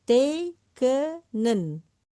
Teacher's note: Tekenen ini terjadi dari 3 suku kata, yang 2-nya panjang.